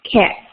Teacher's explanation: Tip of the tongue hits right behind the teeth.